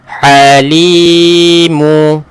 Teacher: Baik, huruf ha, tekankan tuan-puan. Huruf ha ni duduk dekat mana? Halkum di tengah ataupun pertengahan halkum.